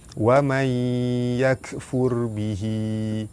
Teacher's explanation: Nun mati bertemu dengan ya, hukum dia idgham ma'al gunnah, dibaca masuk dengan dengung 2 harakat. Ra mati, sebelum dia ada huruf yang berbaris hadapan, ra dibaca tebal.